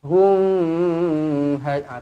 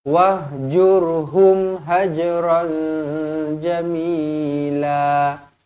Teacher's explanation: mim yang bertanda mati, izhar syafawi, dibaca jelas dan terang eh. Maksudnya mati tu kita matikan terus.